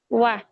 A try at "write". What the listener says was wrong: Not wa. Ra. Not wa. Ra. Right. Right. It's like right, but it's right. It's really similar. Really similar.